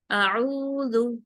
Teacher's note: اب دیکھیں، حمزہ کے اوپر ایک حرکت ہے تو اعوذ نہیں پڑھنا، آ کو لمبا نہیں کرنا، ایک حرکت پڑھنا ہے اور فوراً عین پہ چلے جانا ہے، اعوذ، ٹھیک ہے، او کو 2 حرکت کریں گے